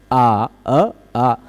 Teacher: जीभ को हमें कुछ नहीं करना पड़ता है, जैसे छ झ टाठा डढाना में जीभ अलग अलग जगह पर लाना ले जाना पड़ता है ना। वैसे ही आ बोलने में जीभ ऐसे फ्लैट खड़ी रहती है, सीधी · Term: दीर्घ अवर्ण